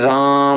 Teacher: तो जैसे राम बोलते हैं हम लोग, ठीक है, ओम बोलते हैं तो थोड़ा सा खींच के बोलते हैं, अधिक समय लगता है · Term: प्लुत स्वर